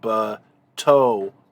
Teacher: this A-class theme vowel basically shifts to a furtive patach to make room for the holum theme vowel